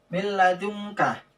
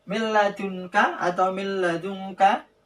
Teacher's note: masuk langsung tanpa didengungkan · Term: idgham bilaghunah